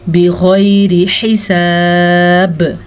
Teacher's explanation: وقف کرنے کی وجہ سے با پہ کلکلا ہوگا